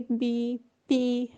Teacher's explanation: bilabial क्या है कि आपने दोनों होंठों को जोड़कर जो आवाज़ निकालनी है ना, जो लफ्ज़ दोनों होंठों को जोड़कर निकलते हैं, जैसे कि बी, पी